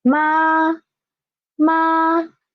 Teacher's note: it started from pitch 5, the highest pitch 5, and it ended at pitch 5 too. So it is a level, flat sound. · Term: first tone